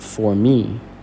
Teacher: For is unstressed, me is stressed. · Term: stressed syllable